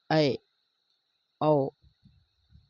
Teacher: अर्ध विपरीत स्वर होता है जैसे ऐ औ ठीक है ये ऐ और औ स्वर को उच्चारण करने के लिए हमें आधे मुख को खोलना पड़ा